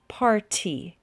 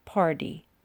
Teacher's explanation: technically this should be party with a t sound. But most people say party with a d sound.